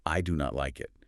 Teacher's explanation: you are forced to put heavy rhythmic stress on do and not end up sounding either aggressive, angry, or robotic.